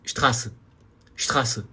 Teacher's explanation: Pode até abrir a boca um pouco mais na letra A, porque é um A chamado de longo. Longo no sentido da pronúncia.